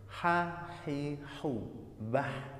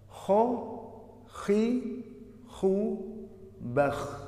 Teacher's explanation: Bedanya hanya antara ha dan kho. Kalau ha itu tipis, kalau kho itu tebal. Ha, hi, hu, bah, tipis.